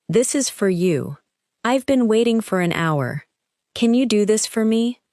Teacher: In each sentence, for is likely to be short and unstressed. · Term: weak word